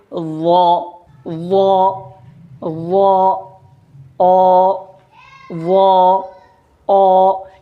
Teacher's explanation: لیکن جب ہم وا کی ادائیگی کرتے ہیں تو ہماری آواز بھاری ہو کر نکلتی ہے، موٹی ہو کر نکلتی ہے، منہ بھر کے نکلتی ہے،